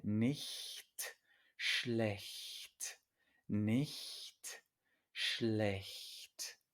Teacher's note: una CH después de una I o E, después de una E, se pronuncia muy suave.